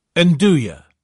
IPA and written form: nˈduː.jə (Nduja)